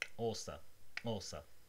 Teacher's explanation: you use your teeth, your tongue, to sort of suck air in.